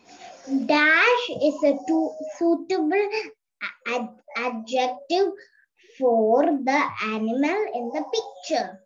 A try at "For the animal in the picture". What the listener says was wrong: For the animal. R sound is not needed. For. the animal in the picture.